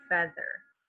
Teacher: it's saying the sound eh, a short E sound, feather, like bread